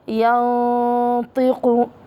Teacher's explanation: هنا إخفاء بغنة والغنة مفخمة لأن الطاء حرف مفخم